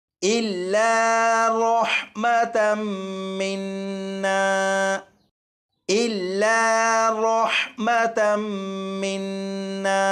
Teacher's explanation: यहाँ पर देखें, ये जो रॉ है, रॉ के ऊपर ज़बर है, इसलिए इस रॉ को पुर यानी मोटा पढ़ेंगे